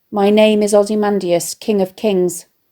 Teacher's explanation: provided by a critic foot with a dum dee-dum stress pattern the stress on King and Kings emphasizes his sense of his own importance